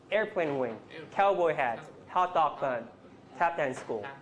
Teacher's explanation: the word that gets most stress is the first noun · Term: complex compounds